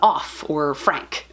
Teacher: consonants that don't use voicing is the reason that your throat is not vibrating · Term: voiceless consonants